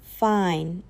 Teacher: Say, "Really?" with your voice lifting, and that's a rising tone. A flat, bored, fine is close to a mid tone.